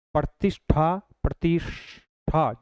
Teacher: इ के बाद में कभी भी श आता है तो उस श का हमेशा कौन सा श हो जाता है? मूर्धन्य श हो जाता है।